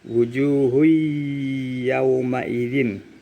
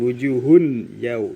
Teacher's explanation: dhomah tanwin bertemu dengan huruf ya maka dibaca lebur